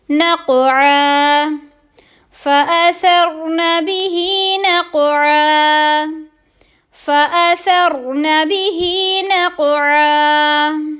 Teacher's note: قوف پر ایک تو قلقلہ، دوسرا یہ پر کر کے پڑھیں گے ہم